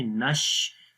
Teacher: آواز آئے گی، نون کو شین کے ساتھ ملائیں گے، نش، شین کی آواز منہ کے اندر پھیل جائے گی